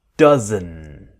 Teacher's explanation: The D is silent. It disappears. So we want that strong N.